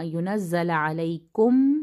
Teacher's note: میم اور میم کا ادغام ہو رہا ہے، تھوڑا سا غنہ کا ٹائم دیں گے۔